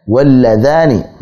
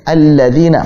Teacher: Apakah nanti dibaca jelas al-ana, al-yasa'a, atau melebur seperti al-ladaini, berarti melebur ke lam berikutnya